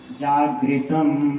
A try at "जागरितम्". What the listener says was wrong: जागरितम्, ग पूरा है,